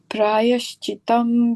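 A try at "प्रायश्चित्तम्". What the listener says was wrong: Prayaschittam. The sound two T's. Chittam. It's just the sound. It's just the sound to it. Chittam.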